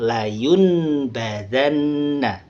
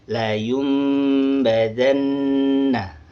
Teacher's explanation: Contohnya ketika dia ketemu dengan huruf ba, nun mati ini menjadi iqlab atau menjadi bunyi huruf mim · Jadi nun mati atau tanwin tidak dibaca an, in, un, tapi dibaca seperti bunyi huruf mim. · Nah, di sini dibacanya bukan layun badanna, tapi layum badanna. Iqlab berubah menjadi huruf mim.